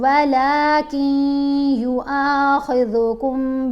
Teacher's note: یہاں پر نون خاموش ہے، کاف کو ہم نے یا سے ملایا ہے. یا حروف یرملون میں ہے.